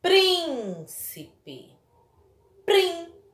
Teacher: prim é a sílaba mais forte da palavra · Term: sílaba tônica